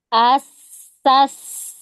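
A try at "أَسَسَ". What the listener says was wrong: Hamzah ke sin. Dia langsung masuk. Jangan A-nya dipanjangin. As. Gitu enggak. Tapi asa. Asa. Gitu.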